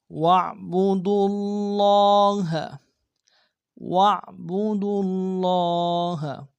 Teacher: وَاعْبُدُوا اللَّهَ، وَاعْبُدُوا اللَّهَ، واو کو عین کے سامنے لائیں گے، عین کو گہرائی سے ادا کریں گے